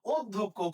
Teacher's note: ধ এর সাথে জ ফলা মানে হচ্ছে ধ দ্বিত্ত হবে।